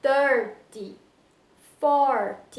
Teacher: Já nas dezenas fechadas, 20, 30, 40, 50, a força não está no final, nesse TY, e sim está no começo da palavra. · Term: stressed syllable